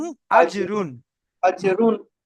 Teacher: মিম সাকিনের পরে হামজা এসছে, তাই এটা ইজহারে স্বাভাবি, বিনা গুণনায় জাহির করে পড়তে হবে।